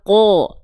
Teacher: Kalau qaf karena dia tebal bunyinya ko, terdengar seperti vokal O